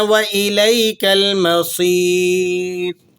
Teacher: را ساکنہ سے پہلے یا ساکنہ ہو تو را باریک پڑھی جاتی ہے